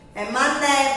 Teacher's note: Terminou com E, mas não tem som de I. Não é mani.